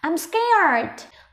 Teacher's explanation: Trong câu này thì nhấn mạnh vào từ scared, trọng âm của câu nhé.